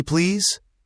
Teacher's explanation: And please should end with a z sound, not an s sound.